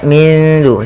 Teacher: Cara membacanya adalah nunnya kita samarkan ke huruf dal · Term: ikhfa hakiki